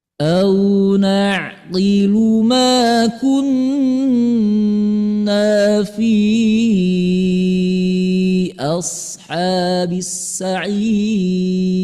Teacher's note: Nah, ini sair, Bunda, iramanya naik ya. Cuma naiknya tidak begitu naik, sedikit aja. Ya, naiknya sih sedikit.